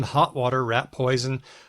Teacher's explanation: it can sound like a glottal stop in hot water rat poison